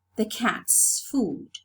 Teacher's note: the possessive morpheme is realized as a voiceless sound